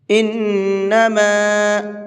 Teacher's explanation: نون کے اوپر تشدید ہے تو یہاں پر غنہ کریں گے